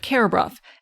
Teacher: There's been a metaththesis, meaning the R and that U vowel have switched places in the pronunciation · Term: metathesis